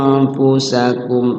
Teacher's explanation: cara baca ikhfanya itu nunnya disamarkan dan mulut kita langsung ke huruf FA